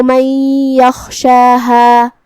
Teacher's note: حرف الخاء کو ہم حلق کے اوپر والے حصے سے ادا کریں گے اور اسے بھاری آواز میں بھی، اور جو کہ اس پہ جزم ہے تو ہمیں خاء کو ظاہر کرنا ہے، جو کہ شین پہ کھڑا زبر ہے تو یہاں مد الف ہوا، ہم اپنی آواز 2 مد کے برابر لمبی کریں گے۔